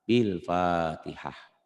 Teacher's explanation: Ini namanya tak marbutoh. Jika dihentikan bunyinya berubah menjadi ha.